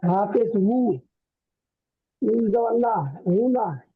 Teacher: হু বলে টান দিচ্ছেন, টান হবে না